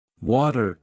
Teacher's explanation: the T sound between vowels often turns into a soft D sound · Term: flap T